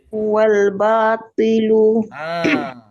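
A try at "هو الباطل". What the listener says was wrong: Jangan batilu. Batilu dah jadi ta. Okey, tetapi jangan terlampau tebal sebab apa? Dia dah turun ke baris bawah, dia dah tingkatan ke berapa tadi tu? Atas, depan, mati, bawah.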